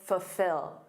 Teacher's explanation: Native speakers often drop that first L, I do, and say fulfill, So instead of saying full, ol, with that dark L, we commonly say fulfill.